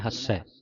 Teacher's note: ਹੱਸੈ ਪਾਠ ਜਿਹੜਾ ਕੱਸ ਕੇ ਅਧਿਕ ਲਾ ਕੇ ਬੋਲਣਾ